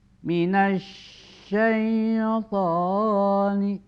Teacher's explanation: Jadi suara alif lamnya di dalam kalimat asyaiton hilang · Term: as-samsiyah